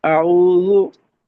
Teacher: वाव पर होंठ गोल करें तो ये मारूफ हो जाएगा